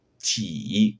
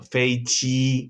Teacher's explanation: La J, sonido no aspirado, próximo a la J del inglés.